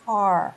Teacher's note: Porque o som é de A, mas a posição da boca é de O